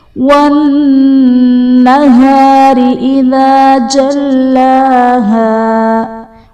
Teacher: والنہار میں نون مشدد ہے، یہاں پر غنہ کریں گے، اور را کے نیچے زیر ہے، را کو باریک پڑھا جائے گا۔